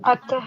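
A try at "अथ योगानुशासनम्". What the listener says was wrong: It is not ataha. Listen. It is not ataha. It is atha. So be very particular about the pronunciation.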